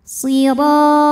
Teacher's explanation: Huruf ra dibunyikan secara tafkhim karena berbaris fathah, maka dibacanya tebal.